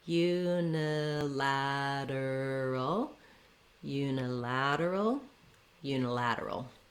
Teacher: Doesn't really matter if I say unilateral or unilateral. I just want to have my length and stress here on the lad, so that unstressed reduced vowel is very short · This letter U also sounds like how we say letter U, so it does have that glide Y sound, just the same as the word you, the pronoun. · when we change from lateral to unilateral, we have a little bit of secondary stress here on this U syllable